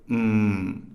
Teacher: again looking at M this is a babal nasal and so both lips are closed and air comes out through the nasal cavity